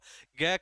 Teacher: ग का उच्चारण स्थान क्या हो जाएगा? कंठ होगा, क्योंकि क वर्ग से संबंधित है।